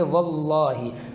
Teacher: یہاں پر بھی لفظ اللہ سے پہلے زبر ہے تو اس کو موٹا پڑھیں گے